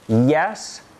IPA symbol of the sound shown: j